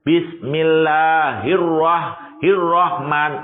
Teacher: Bismillahirrahman tipis, ro dibaca tebal. Lah, untuk mengucapkan ro tidak boleh terulang 2 kali, hanya 1 kali.